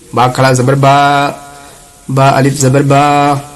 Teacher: دونوں میں فرق اتنا ہے کہ جو زبر ہے اس کو کھینچتے نہیں ہیں اور یہ کھڑا زبر جو ہے اس کو کھینچ کر ایک الف کے برابر کھینچ کر پڑھتے ہیں